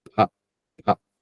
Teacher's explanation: some native speakers in Hindi, they tend to pronounce that as fa with F sound, but here it is pa